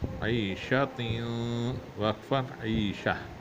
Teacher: اگر تا گول والی آ جائے، اگر اس پہ وقف کیا جائے تو اس تا کو ہا سے تبدیل کر دیتے ہیں ، تا نہیں رہتی۔ ہاں اگر لمبی والی ہو تو پھر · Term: ہا میں تبدیل